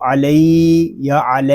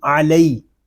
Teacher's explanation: لام یا زبر لی، علی. یہاں یا لین ہو رہا ہے، اس کو ہم کھینچ کر نہیں پڑھیں گے، اس کو علی یا علی اس طرح نہیں پڑھیں گے، اس کو پڑھیں گے علی.